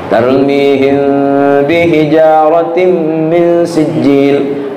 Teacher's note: Tarmihim mim sukun, kemudian ada huruf ba sesudahnya, maka dia termasuk huruf ikhfa syafawi, didengungkan.